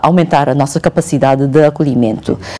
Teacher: Nasal vowels are a feature that is preserved in the Portuguese of Macau.